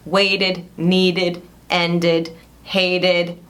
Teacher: se o verbo termina com som de T ou D, você vai falar essa última sílaba de id